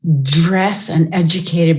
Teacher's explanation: dress and educated both with affricated d sounds